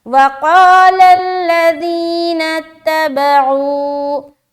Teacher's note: واو مدہ بھی ہم کر رہے ہیں کیونکہ واو ساکن ہے، اس سے پہلے پیش ہے